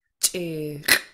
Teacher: this one's low tone, but you have a pinched CH and then a pinched underline X.